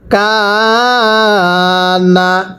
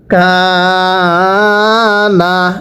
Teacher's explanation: কাফের মধ্যেও এক আলিফ টানতে হবে। জবরের পরে খালি আলিফ এক আলিফ টানতে হয়।